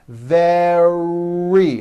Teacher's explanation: Make sure that the R sound is strong and your lips are coming forward. Your tongue is back and you push out the R.